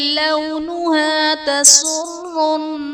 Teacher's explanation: تسر الناظرین میں نون مشدد ہے، یہاں پر غنہ کر کے پڑھیں گے